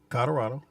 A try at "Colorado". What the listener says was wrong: There's an L in there.